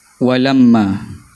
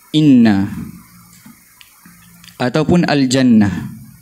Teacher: untuk nun dengan mim yang bertasydid, gunnah dia tu lebih jelas, lebih sempurna. Jadi kita sebut sebagai harfa gunnatin, ialah huruf gunnah yang bertasydid.